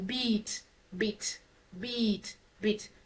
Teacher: this is a close front unrounded sound or vowel sound